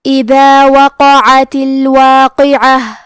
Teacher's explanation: کلمت اذا میں حرف دال کی ادائیگی زبان کے سر اور اوپر کے دانتوں کے اندرونی کناروں سے ہے